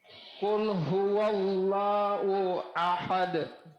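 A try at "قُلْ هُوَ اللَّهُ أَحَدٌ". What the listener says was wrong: Hu-nya lagi. Qul huwallahu ahad. Bukan u ya Pak, hu.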